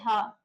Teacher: ण और ढ हमारे मूर्धन्य है। इनका उच्चारण स्थान मूर्धा है।